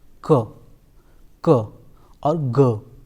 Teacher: the back of the term touches to the soft palate so it is the back of the tongue which is active during the production of these two sounds